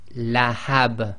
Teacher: the ba, which is carrying the kasratain, becomes sakin, and it effectively becomes an echo letter